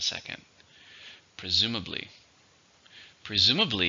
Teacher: How many syllables are in presumably? 4. Stress on the second.